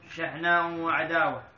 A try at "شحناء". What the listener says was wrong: شحناء وعداوة، شحناء ما بالتنوين،